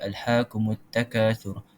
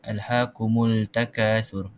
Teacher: kita hilangkan sebutan lam dalam pembacaan satu kalimah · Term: alif lam syamsiah